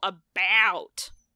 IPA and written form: əˈbæut (about)